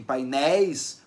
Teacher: Em painéis, o E é a vogal, o I é a semivogal. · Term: ditongo decrescente